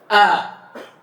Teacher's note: Itu bukan alif namanya tapi ham hamzah. Ah, hamzah inilah yang kata beliau makhrajnya di aqsal halq tenggorokan paling bawah.